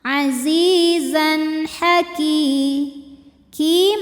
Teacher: Zai panjang dua harakat Azizan berikutnya ada hukum izhar halqi sebab ada tanwin fathah menghadapi huruf halqi atau huruf tenggorokan yaitu ha maka tanwin dibaca jelas